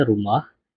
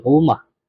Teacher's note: Contoh yang lain yang dapat diberikan adalah perkataan rumah, di mana kalau BM standard bunyi dia rumah, kalau dialek Perlis bunyi dia rumah. Jadi, proses nasalisasi tersebut berlaku pada suku kata yang kedua, iaitu bunyi mah.